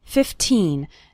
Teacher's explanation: remember to pronounce the second syllable of 15 nice and strong